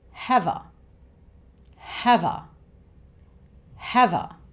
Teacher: 'Have' ends with the 'v' sound, a consonant sound, and 'a' becomes the schwa sound again here